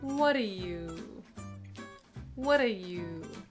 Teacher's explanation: We hear the d' sound, We don't hear the T in the word